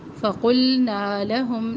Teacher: نا الف مدہ اس کو پورا ادا کرے اور دو حرکات کے برابر یعنی ایک الف کے برابر